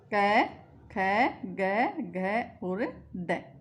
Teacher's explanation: इनको बोलकर देखेंगे तो हमारी जो प्राणवायु वहीं पर टकरा रही है, कोमल तालव्य पर, ठीक है। तो ये संस्कृत में ये कंठ वर्णी है, ठीक है। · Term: कोमल तालव्य वर्ण